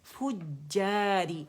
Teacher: अच्छा, फुजारी, फ़ैफू, फ़ैफू दम्मा के साथ पहले मखरज जाएंगे, एफ फ़ा का मखरज पकड़ेंगे, उसे गोलाई देंगे